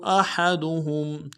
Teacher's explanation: احدهم میں حمزہ کو ہا کے ساتھ ملا, حمزہ کو نرم سے ادا کریں گے, ہا کو گہرائی سے ادا کریں گے, اور ہا کو میم ساکن کے ساتھ ملانا ہے, میم ساکن میں غنہ کریں گے